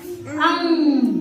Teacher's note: इसको बोलते हैं अनुनासिक नाक से आवाज आ रही